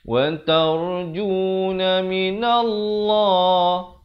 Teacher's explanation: Lafz jalalah dibaca tebal 2 harakat.